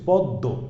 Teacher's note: এই দটা দুইবার উচ্চারিত হচ্ছে